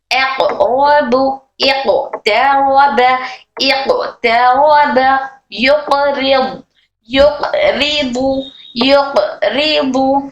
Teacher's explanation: قوف ہماری زبان کی جڑ اوپر تالو کے نرم حصے کو ٹچ ہو کر حرف قوف ادا ہوتا ہے